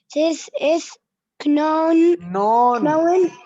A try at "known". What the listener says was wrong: K is silent, ya Habibi. K, you don't read K.